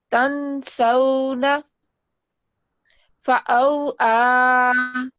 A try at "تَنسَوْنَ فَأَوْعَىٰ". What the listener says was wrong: اس کو بہت زیادہ نہیں کھینچنا.